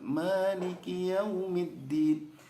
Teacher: Maliki Yaumiddinnya maknya terlalu panjang. Mali harusnya 2 harokat.